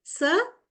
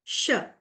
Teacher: So these are fricatives, but different kinds of fricatives, alveolar and palato-alveolar fricatives.